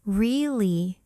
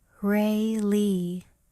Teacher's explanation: your voice goes up or sometimes really your voice goes down. The meaning changes depending on your tone.